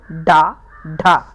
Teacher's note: जीभ ऊपर लगी और झटके में नीचे गिरती है, जैसे डा, ढा। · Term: उच्छिप्त व्यंजन